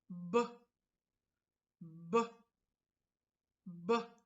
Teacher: Во изговор на гласот Б учествуваат устните и мекото непце. Овој глас е во групата устнени плозиви. Воздушната струја наидува на препрека. · Овој глас е во групата устнени плозиви. Воздушната струја наидува на препрека. Тоа се устните, па под притисок на воздухот настанува експлозивен звук.